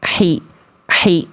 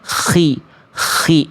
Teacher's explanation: Ya, harusnya khi, khi. Jadi kho itu karakter nafasnya lebih ada agak kasar sedikit, walaupun bukan ngorok yang berlebihan.